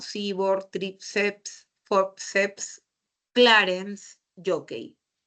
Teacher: Todas son graves porque todas tienen la mayor fuerza de voz en la penúltima sílaba.